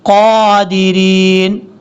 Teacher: قاف حروف مستعلیہ میں سے پر پڑھا جائے گا